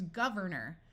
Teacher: the or sound at the end of a word tends to become muffled and sound like er